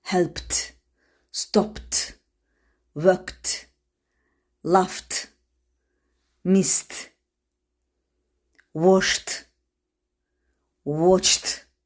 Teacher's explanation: bu səsləri səsləndirərkən əlimizi boğazımıza tutsaq, boğazımızın titrəmədiyini, səs tellərinin titrəmədiyini hiss edəcəyik. Yəni bu səslər boğazdan çıxarkən yalnız hava ilə tənəffüs olunur. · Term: unvoiced consonants